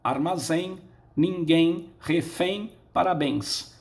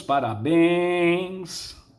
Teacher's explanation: a sílaba tônica de cada uma delas será a última